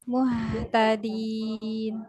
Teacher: huruf H-nya dialirkan suara dan nafasnya